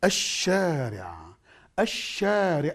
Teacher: This is one of the signs also, which is give you to emphasize that this letter non-pronounced. So sheen after L makes the lam non-pronounced